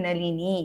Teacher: நுனி நாக்கால நளினி ந அந்த ந சொல்லணும்